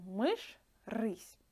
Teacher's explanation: still we pronounce the sound hard, because there is no soft sounds for ж and ш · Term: hard sound